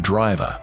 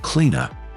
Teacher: One example is its lack of rhoticity. Speakers dropped ending R sounds.